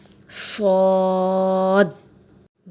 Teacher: صاد، صاد جو ہے یہ موٹے حروف میں سے ہے اور اسے بھی دیکھیں کھول کے لکھا ہوا ہے تو اسے کھینچ کے پڑھیں گے، صاد کا مخرج یہ ہے کہ زبان کی نوک اور دونوں دانتوں کے اندرونی کنارے سے لگے تو صاد ادا ہوتا ہے